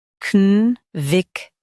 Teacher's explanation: Stress vic and soften ted.